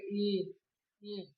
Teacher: इनका उच्चारण स्थान जैसे बोल के देखेंगे ई, यानी कि जीभ ऊपर तालु पे टकराती है